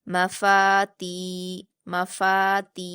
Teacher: ता पर या मद्दा है इसको दो हरकात खींचेंगे